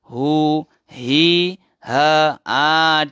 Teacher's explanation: Bergetar peti suara. Ada aliran udara. Sambil hembus nafas. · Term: huruf ha